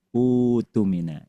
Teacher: hamzah wasalnya dibaca dengan bunyi u dan hamzahnya ditukar diganti dengan huruf mad dan huruf mad yang layak, yang pantas, yang serasi menggantikan ee pada posisi di sini adalah wau bukan alif u. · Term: wasal ketemu qot